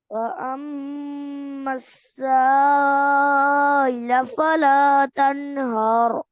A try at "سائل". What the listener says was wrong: سائل साफ पढ़े।